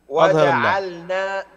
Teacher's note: أظهر اللام واحرص على السكون في جعلنا